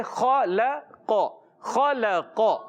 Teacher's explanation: پیارے بچوں خا کی ادائیگی، خا حروف مستعلیہ موٹا حروف میں سے ہے، موٹا ادا کریں گے. لام کو باریک رکھنا ہے، قاف کو پر رکھنا ہے، کیونکہ قاف حروف مستعلیہ سے.